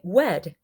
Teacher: Gliding happens when the R sound, the becomes like a W sound